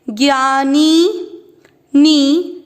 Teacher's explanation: नी की मात्रा बड़ी लंबा खींचेंगे